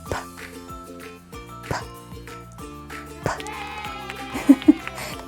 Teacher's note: It says p, like a little puff of air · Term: p sound